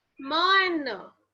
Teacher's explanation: ma and na, which have air flowing through the nose